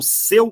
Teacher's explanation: seu também é um ditongo só que repara que o eu é fechado